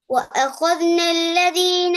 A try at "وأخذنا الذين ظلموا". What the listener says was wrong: அஹது தால் sound வரல. அஹது தால் கலக்கப்பட்டது. தால் அஹது தான் போகுது. தால உச்சரிக்கணும், கலக்காம வரணும். وأخذنا الذين وأخذنا الذين وأخذ அவ்வளவுதான். وأخذ து என்று போகக்கூடாது.